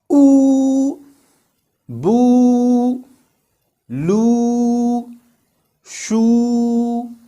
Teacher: our lips become round and the root of our tongue raises up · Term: long vowels